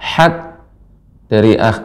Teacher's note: awal hingga akhir pengucapan ha itu dengan tengah tenggorokan